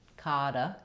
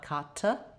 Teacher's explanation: we're going to flap that T, kada, not kata, but nice light flap.